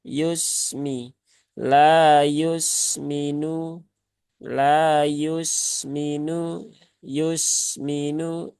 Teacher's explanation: Sin tidak memantul, dia mengalir. Maka alirkan saja Yusmi, Yusmi. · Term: Sin sukun